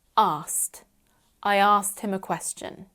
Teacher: In fast spoken English, we often get rid of the k sound and say asked.